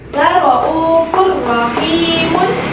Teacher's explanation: apabila ada tanwin bertemu dengan salah satu huruf idgham bila gunnah, yaitu ra, maka dileburkan ke dalam huruf sesudahnya